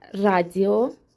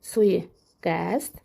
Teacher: Suiqəs deyə bilərik suiqəsd və yaxud da burda da radius sözlərini nümunə gətirə bilərik. Hər birində qoşa saitlərin arasına y səsi əlavə olunur. Y daxil olur və səs artımı hadisəsi baş verir.